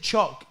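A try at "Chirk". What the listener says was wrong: You are saying C-H-U-C-K. Chuck.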